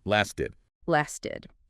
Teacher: that middle T sound often softens to that flapped sound, especially when it's between vowels, or in this case, between the S and the vowel sound in the ed ending, and the id ending itself is pronounced aid. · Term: flap T